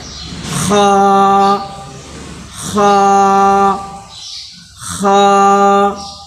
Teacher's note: حلق کے اوپر کے حصے سے خا ادا ہوتے ہیں